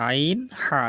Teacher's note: হা গলার ভিতরে যাবে, আমরা চাপ দিয়ে বলবো, কণ্ঠনালীর মাঝখান থেকে উচ্চারিত হয়